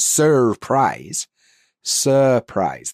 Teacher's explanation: we'll also not pronounce the R sound when the following sound is also a consonant.